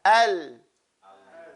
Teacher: Istifal, the tongue has to start flat and it goes back to being flat. Al. And then it actually doesn't have to go back, but it goes from bottom to top, okay?